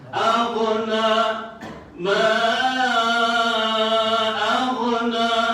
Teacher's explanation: Aghna itu dah jadi macam syidid. Dia hampir-hampir macam qalqalah.